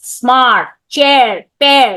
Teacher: The R sound is not the rolling R sound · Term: controlled